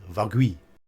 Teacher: You can pretty much drop the L.